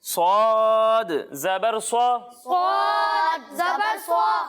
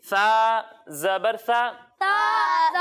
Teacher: इसमें सीटी की आवाज भी आएगी और इसे मोटा करके पढ़ेंगे क्योंकि सौद हुरूफ मुस्तारिया में से है।